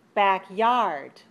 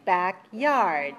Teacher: okay back yard where is the stress the second syllable right so backyard is stressed on the second syllable